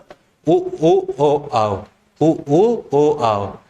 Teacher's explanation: इनको बोलते हुए हमारे ओट जो है ना वह वृताकार हो जाते हैं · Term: वृत मुखी, वृत्तमुखी